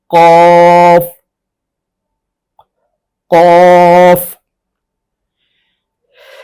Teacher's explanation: ان میں خا، غین اور قاف یہ صرف حروف مستعلیہ ہیں، یعنی ان کی ادا کرتے وقت زبان کی جڑ تالو کی طرف بلند ہوتی ہے، لیکن زبان کا درمیان والا حصہ نیچے ہی رہتا ہے، تالو کے ساتھ نہیں ملتا